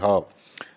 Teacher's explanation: ह जो है वह घोष भी है और महाप्राण भी है। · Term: घोष महाप्राण